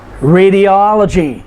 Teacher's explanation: Radiology is 5 syllables, but the third to the last syllable is the O-L, all, and so we put the emphasis there.